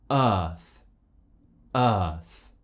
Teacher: Our mouth is just slightly open. My tongue is flat, but it's slightly raised from the bottom of my mouth. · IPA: /ɜː/